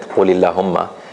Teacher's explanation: But if you don't start from it, Qulillahumma, you don't pronounce the hamza and you don't pronounce the lam